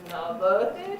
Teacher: it gets very high because it's got a very long rising tail